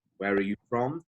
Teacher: the tone will go up towards the end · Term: intonation